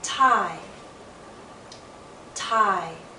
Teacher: I. Remember, the first sound is going to be louder and longer. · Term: diphthong